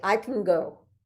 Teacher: it's almost like you don't hear the n and the g